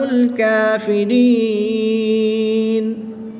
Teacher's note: یا مدہ کے بعد نون ساکن آ گیا تو وقف کی حالت میں یہاں پر مد عارض ہوگی، 2 سے 3 الف تک کھینچ کر پڑھیں گے۔